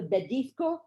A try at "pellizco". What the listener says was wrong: Pellizco with a P.